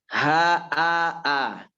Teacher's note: A harus gitu, jangan O. Tapi A tipis dan dibuka fathah. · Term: hamzah